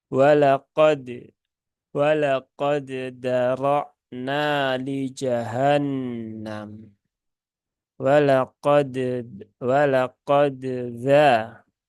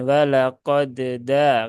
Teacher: Ya, pertemuan mutaqarib, tetapi di sini tidak terjadi idgham, sehingga masing-masing harus dibaca dengan izhar. Maka ketika dibaca dengan izhar, maka tunaikan qalqalah dari huruf dal ya.